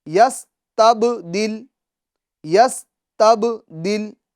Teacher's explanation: قلقلہ کریں گے، با کی آواز لوٹتی ہوئی محسوس ہوگی